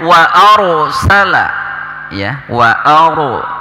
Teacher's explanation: Kemudian ayat ketiganya wa arsala ya, wa aru ya, ro-nya di sini ro tafhim ya, tebal, maka suara r-nya betul-betul terdengar